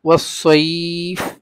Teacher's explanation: ইয়া সাকিন, তার পূর্বের অক্ষরে জবর, আর পরের অক্ষরটা ওয়াকফের কারণে সাকিন, মানে তামার কারণে আমরা সাকিন করছি, এজন্য এটা মধ্যে লিন, দুই আলিফ লম্বা করতে পারবো।